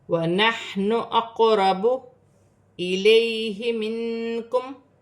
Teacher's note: یا ساکن سے پہلے زبر ہے تو یا لین بنے گی، اسے کھینچا نہیں جائے گا. نون ساکن میں اخفا ہوگا کیونکہ کاف حروف اخفا میں سے ہے، میم ساکن میں غنہ نہیں کیا جائے گا.